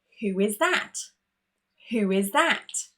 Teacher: In between who and is, you can hear this extra w sound.